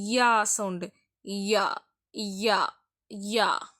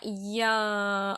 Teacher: யா அதெல்லாம் சொல்லும்போது நாக்கு கொஞ்சம் மேல வரும் ஆனா எதுலயும் படாது